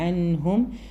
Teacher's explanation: വരുന്ന ഇളഹാർ ആണ് കൃത്യമായിട്ട് അൻഹ് വരുമ്പോൾ വീണ്ടും ഇളഹാർ വന്നിട്ടുണ്ട് അതൊക്കെ മണിക്കാതെ നൂന് മണിക്കാതെ തന്നെ ഇളഹാർ ചെയ്തുകൊണ്ട് തന്നെ പറയാം